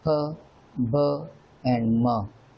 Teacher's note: when both the lips, they touch each other, and the sound produced this way is called bilabial sound.